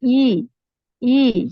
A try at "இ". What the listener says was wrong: ஈ ஈ அல்ல இ ஈ ஈ அல்ல. என்று சொன்னா நல்லா லைட்டா நாக்கு தூக்கப்படுது. நாக்க நல்லா கீழே வச்சுக்கோங்க. உச்சரிப்பு அப்ப அந்த ரெண்டு வித்தியாசம் இருக்குது. வேறுபாட மிக தெளிவாக குருவான் நாங்கள் கொண்டு வரணும். ஈ அல்ல இ அதுக்கு நீ ஒரு வேலை செய்யணும் என்றால் இந்த இடத்துல கொஞ்சம்